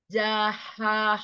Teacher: ha kecil dari tengah tenggorokan